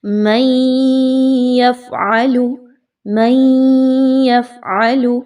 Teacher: فَمَا جَزَاءُ مَن يَفْعَلُ، اگین ادغام کا قاعدہ جو ہے اس کو اپلائی کیا جائے گا، نون ساکن کے بعد یا کا حرف آ رہا ہے ادغام مع الغنہ، ادغام ود غنہ۔ نون کی آواز کو یا کی آواز کے ساتھ ملائیے اور غنہ بھی کیجیے